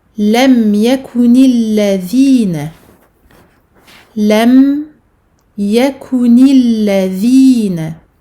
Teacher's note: Lam fatha, mim, soukoun, lam. Mim qui possède un temps intermédiaire, un temps moyen. Donc je ne dois pas aller trop vite sur ce mim soukoun.